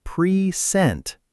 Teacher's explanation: That's an action, so it's present. Stress on the second part.